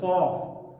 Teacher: قاف حلق سے ادا کیا گیا تھا